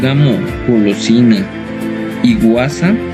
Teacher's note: El fonema velar sonoro, que representa por medio de la letra G ante las vocales A, O, U